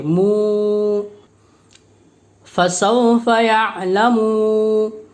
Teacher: واو مدہ کو ایک الف کے برابر کھینچ کر پڑھیں گے، مو، فسوف یعلمون۔